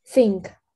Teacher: Первый звук у нас глухой, с, там вы не добавляете голос, например, think, здесь он глухой